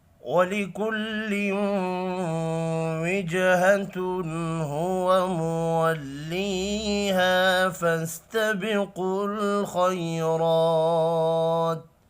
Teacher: جیم ساکن پر قلقلہ کریں گے